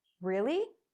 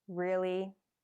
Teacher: you start and finish higher, but to sound annoyed, the tones are lower.